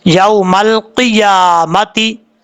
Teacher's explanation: یوم القیامتی، اس کو قیامت نہیں پڑھنا، قیامت پڑھیں گے تو بہت بڑی مسٹیک ہو جائے گی، یا چھوٹ رہا ہے، ایسا نہیں کرنا، یا کو اپنے مخرج سے ادا کرنا ہے۔